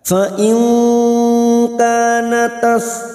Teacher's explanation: Fa in, nun sukun bertemu kaf ikfa hakiki, kita samarkan bunyi nun sukun dan mendengung selama 2 atau 3 harakat